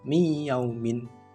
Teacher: Jadi nun mati yang biasanya kalau bacanya en gitu, itu nggak ada, langsung dimasukkan ke ya-nya, miyaumin gitu.